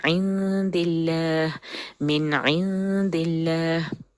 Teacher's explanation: وہ نون اور دال کے بیچ میں اخفا کا غنہ ہے، اس کو ٹائم دینا ہے